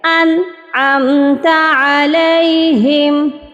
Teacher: یہاں پر ہم نے نون کو پڑھ کر فوراً سے آگے چلے جانا ہے، بس اس کی آواز کو آپ نے ظاہر کرنا ہے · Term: اظہار